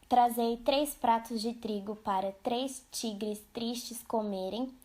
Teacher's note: E o fonema re é sonoro, líquido, vibrante, simples. O t é surdo, oclusivo, e o c é surdo, fricativo.